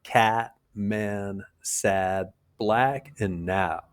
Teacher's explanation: Your jaws drop slightly, and your tongue's low in your mouth, with the front of it raised a little bit. It's a short, sharp vowel · your mouth's wide open with square lips. Your jaws drop slightly, and your tongue's low in your mouth, with the front of it raised a little bit. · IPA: /æ/